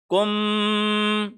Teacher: یہاں پہ میم کے اوپر 1 سیکنڈ کا غنہ کیا، یعنی ہونٹوں کو ہم نے ملایا، 1 سیکنڈ تک ملائے رکھا اور 1 سیکنڈ کے بعد ہم نے ہونٹوں کو علیحدہ کیا